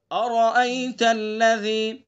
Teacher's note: را کو پر پڑھیں گے، حمزہ کو صاف ادا کریں گے، را سے پہلے بھی حمزہ اور را کے بعد میں بھی حمزہ ہے، ٹھیک ہے، دونوں حمزہ کو صاف پڑھنا ہے۔